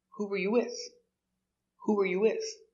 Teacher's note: it's an information question. Starts with a question word. Intonation goes down at the end.